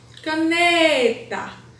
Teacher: A sílaba mais forte é a penúltima. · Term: paroxítona